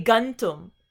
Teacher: But remember, this nasal, this ma here, is a labial. Because you have tum and ta is a dental, it changes into gantum